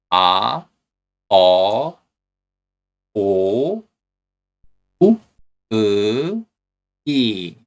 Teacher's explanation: These vowels are pronounced with one steady mouth position. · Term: simple vowels